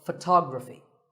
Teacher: the stress goes to the second syllable